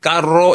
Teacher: 우리가 원래 제대로 된 R 모양은 원래는 트릴 사운드